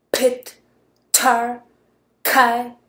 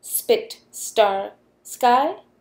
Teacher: in word initial position, there is air coming out of your mouth when you say p. We can see this by holding a little piece of paper in front of our mouth. · the difference between these two sounds is known as a difference in aspiration. And there's nothing in the writing system that would tell you about aspiration.